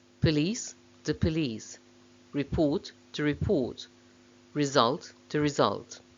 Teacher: both a noun and verb in these noun verb pairs are stressed on the second syllable